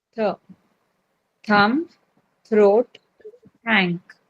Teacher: And when th gives you the sound as th. You can't feel any vibration. So, that is called the unvoiced th.